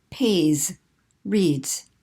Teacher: if it ends in a voice sound like pay read then we're just going to add the buzzing sound